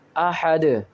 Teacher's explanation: قلقلہ کے معنی ہے آواز لوٹتی ہوئی نکلے، ہمیں دال کی آواز لوٹتی ہوئی نکالنی ہے۔ احد، دال کو ساکن کریں گے، ح دال زبر حد، احد۔